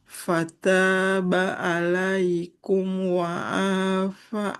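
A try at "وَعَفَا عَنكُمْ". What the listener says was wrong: panjang bukan ainnya, tapi fa-nya. Wa'afa. wa'afa ankum.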